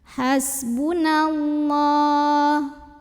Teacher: alif lam bertemu huruf Syamsiah yaitu lam maka alif lam ini dilewati · Mad asli atau Mad thobii karena ada baris fathah tegak di atas huruf lam cara bacanya dipanjangkan lamnya 2 harokat saja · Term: alif lam syamsiah